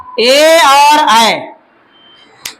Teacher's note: कंठ तालु से उच्चारण होगा ए और ऐ